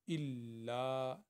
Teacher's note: یہ دیکھو لام کے ساتھ الف ہے، اس کو 2 حرکت کے برابر پڑھیں گے۔ الا، لام کو 2 دفعہ پڑھیں گے کیونکہ اس کے اوپر شد ہے، لیکن جب لام دوسری دفعہ پڑھا جائے گا تو وہ حروف مدہ بالالف کی شکل میں پڑھا جائے گا۔